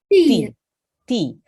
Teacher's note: Keep it really nice and short. We don't want to elongate it. We don't want a y sound at the end.